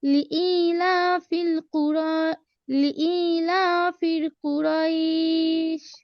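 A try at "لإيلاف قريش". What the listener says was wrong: ইলাফিল হবে না ইলাফি ইলাফি কুরাইশ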